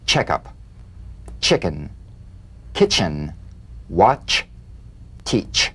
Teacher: let's put it together into one sound a crisp staccato treatment feel a sharp crisp percussive sensation between the tip of the tongue and the gum Ridge · place the tongue firmly on the upper gum Ridge for the T then crash through gently but sharply with the sh